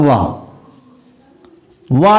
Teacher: एक ऐसा अक्षर है जो दांत के साथ साथ होठ का भी यूज होता है बोलने में। वाह दांत का भी यूज होता है। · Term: दंत्योष्ठ